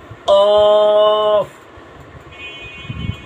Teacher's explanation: জিব্বার গোড়া, তার বরাবর উপরে তালুর সঙ্গে লাগাইয়া দুই নোক্তাওয়ালা অফ, গোলাটা একটু ফুটবে অফ।